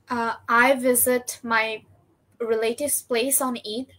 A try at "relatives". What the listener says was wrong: এটাকে আমরা রিলেটিভ না বলে উচ্চারণ হচ্ছে রিলেটিভস। রিলেটিভস, রিলেটিভস। ওকে, রিলেটিভ বলা যায়, সুন্দর উচ্চারণ হচ্ছে রিলেটিভস।